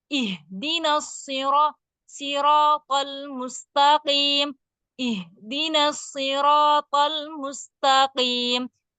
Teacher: Q itu ee enggak tipis tapi enggak terlalu tebal.